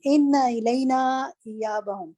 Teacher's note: یہ نا نہیں ہے، یہ اس کے ساتھ الف نہیں آ رہا. انا علینا تشدید جس وقت آپ ادا کریے نا تو آپ نا کو کھینچ رہی ہیں، نا کو کھینچنا نہیں